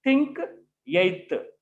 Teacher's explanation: produced with the help of the tip of the tongue and the upper teeth are called dental sounds, because the articulator of the sound is dental teeth, so that they are known as dental sounds.